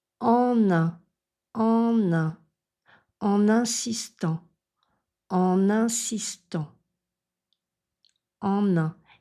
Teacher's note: c'est vraiment l'ouverture de la mâchoire en bas pour en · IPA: ɑ̃